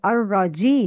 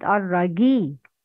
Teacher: Pronounce G with affrication